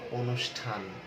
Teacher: অনুষ্ঠানে কিন্তু মূর্ধন্য ষ ঠ যুক্ত, কিন্তু ওই মূর্ধন্য শটা তালব্য শ এর মতো উচ্চারণ করছে।